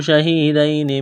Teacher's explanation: یا ساکن سے پہلے زبر ہے، حروف لینیا ہے، اس کو کھینچنا نہیں ہے · یا ساکن سے پہلے زیر ہے، حروف مدہ یا ہے، الف کے برابر کھینچنا ہے